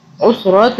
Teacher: وَإِن كَانَ ذُو عُسْرَةٍ، یہ اخفا کے حرف میں سے ہے، اس لیے ہم تا دو زیر تن پہ جو ہے نا اخفا کریں گے۔ تن جو ہے یہ ن، اس کو ہم 2 سے 3 سیکنڈ کے لیے چھپائیں گے، ناک میں رکھیں گے